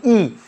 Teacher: ई बोलने में आपका क्या हो रहा है, जीभ का अगला भाग काम कर रहा है